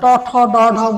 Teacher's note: এটা পুরোটা ইউটার্ন হয়ে যায়, এরকম উল্টে যায়, এবং ওইখানে ওই মূর্ধায় গিয়ে স্পর্শ করে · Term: মূর্ধান্য